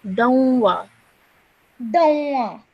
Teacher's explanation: So when you join this together, because it's a vowel mushaddad, we need to produce the nasal sound whilst joining the dal to the vowel. So we would say Dawnwa.